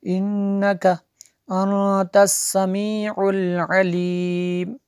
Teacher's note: تا حروف اخفا میں سے ہے، نون ساکن کے بعد تو یہاں پہ اخفا ہوگا